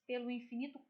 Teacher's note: quando a gente pronuncia, quando a gente fala, é como se a gente juntasse num som só